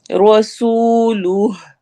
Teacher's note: رو موٹا ہوگا ہیوی پڑھیں گے